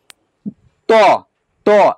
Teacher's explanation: त देखिए इसको स्पर्श दंत को स्पर्श कर रहा है।